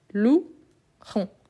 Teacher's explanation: Donc, le E ici, c'est comme j'ai lou. Donc, j'ai lou, il n'y a pas la prononciation de E.